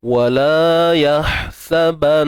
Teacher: Kemudian ha yang sukun, kita pedaskan ha ni di bahagian tengah kerongkong kita disempitkan